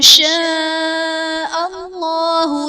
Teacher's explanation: شاء اللہ میں اسم جلالت اللہ عز و جل کے لام سے پہلے حرف پر زبر ہے تو یہاں پر اسم جلالت اللہ عز و جل کا لام پر یعنی موٹا پڑھا جائے گا